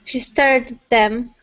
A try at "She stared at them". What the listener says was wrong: It's like a sound. So we're really stopping it. Give me a little more sound on at.